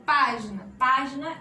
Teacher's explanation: é a antepenúltima sílaba mais forte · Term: proparoxítona